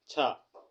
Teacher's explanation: छा वर्ण स्पर्श संघर्षी है